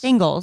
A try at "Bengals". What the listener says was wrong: You say Bingles, like Bing, B-I-N-G. Bengals. It's B-E-N.